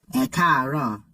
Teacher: These three A's are all part of a single syllable, but with a high, low, high progression.